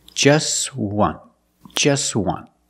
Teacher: we see the t is between consonants so it's silent